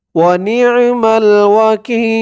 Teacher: অক্ফ করার কারণে জেরের পরে ইয়া সাকিন একালিফ টানটা তিন আলিফ টান হয়ে গেছে